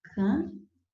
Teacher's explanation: aqui eu tenho o som do C, eu tenho o som de um A nasal, eu tenho o som do P e do O. Eu tenho 5 letras sim, C-A-M-P-O, mas eu tenho apenas 4 fonemas, 4 sons, porque o M não é pronunciado em final de sílaba no interior da palavra, lá no meio da palavra, certo?